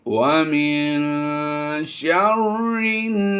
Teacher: यहाँ पर नून साकिन के बाद देखिए आप, शीन हुरूफ इख्फा में से आया है तो हमने यहाँ पर भी गुन्ना करना है